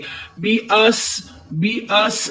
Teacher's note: सीन को सीटी की आवाज देते हुए पढ़ेंगे।